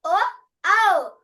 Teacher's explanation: కంఠం నుంచి వస్తుంది ఓష్టాలు పెదవులు కలుస్తున్నాయి అన్నమాట ఈ రెండు అక్షరాలు ఉచ్చరించేటప్పుడు కంటోస్టవ్యః ఆ వ వ అన్నప్పుడు ఎలా పలికాము · కంఠ ఓష్టవ్య అంటే కంఠం నుంచి వస్తుంది